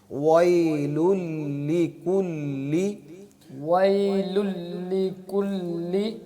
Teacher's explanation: پیش میں بھی ہونٹ گول ہوتے ہیں، واو پہ بھی ہونٹ گول ہوتے ہیں. جب واو کو ادا کریں گے تب بھی ہونٹوں کو گول کریں گے، پیش پڑھتے وقت بھی ہونٹوں کو گول کریں گے.